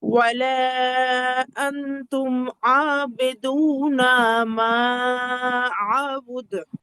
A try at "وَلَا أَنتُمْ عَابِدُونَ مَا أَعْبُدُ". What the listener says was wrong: ওই যে লাস্টের কলকলা গুলো একটু এলোমেলো হয়েছে, হ্যাঁ, লাস্টের কলকলা গুলো প্রত্যেকটার মধ্যে তো কলকলা আছে, যে ওয়ালা আনতুম আবিদুনা মা আ'বুদ, কলকলা গুলো একটু খেয়াল করতে হবে।